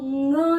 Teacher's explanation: ंग जो है वो कंठ भी है और साथ में नाक से आवाज भी आ रही है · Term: नासिक